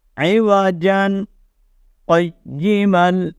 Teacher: آپ نے آواز کو روک لینا ہے، ٹھیک ہے، اور سانس کو جاری رکھنا ہے، 1 یا 2 سیکنڈ کے لیے رکنا ہے، پھر اس کے بعد اگلے لفظ کو پڑھ دینا ہے، اس کو کہا جاتا ہے سکتہ، ٹھیک ہے۔